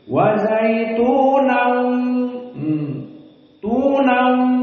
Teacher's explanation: idgham bi gunnah, harus 2 harokat dan makhrajnya pindah ke hidung